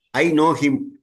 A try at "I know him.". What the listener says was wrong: I know him. அவ்வளவுதான்.